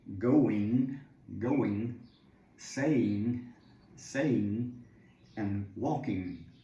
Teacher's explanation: And a lot of times, almost always, when native speakers speak, this G more or less disappears